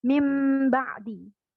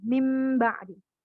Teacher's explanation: Jadi seakan-akan dia harusnya dia nun tadi, nun sukun dan tanwin, tapi seakan-akan terdengar seperti huruf mim. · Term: iklab